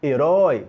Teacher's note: Pronúncia oi. Então nós temos ali um ditongo aberto, oi, posição na última sílaba.